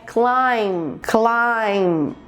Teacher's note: A gente engole esse B final e não fala. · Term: sons mudos